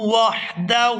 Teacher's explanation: ہا کو حلق سے اچھی طرح سے ادا کریں گے